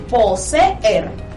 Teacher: vemos que hay dos vocales, y es que las dos vocales tienen sonidos independientes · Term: hiato